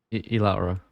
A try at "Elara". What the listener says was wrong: Why are you pronouncing the E so heavily?